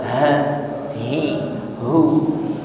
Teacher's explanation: tenggorokan paling bawah, suaranya gema